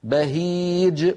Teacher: انظروا إلى الجيم كيف تقلقلت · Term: قلقلة